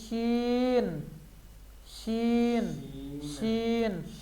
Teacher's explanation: زبان کا جو میڈل ہے نا یہ اوپر تالو سے ٹکرا رہا ہے